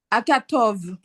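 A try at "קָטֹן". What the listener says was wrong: Non, c'est un noun. Voilà, tu vois, il est plus long.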